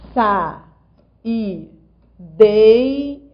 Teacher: Esse I é a segunda vogal do hiato, mas ele não é a vogal tônica. Existe uma vogal mais forte do que ele na palavra. É só você pronunciar com calma, olha.